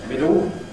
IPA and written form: ˈmɪdo (middle)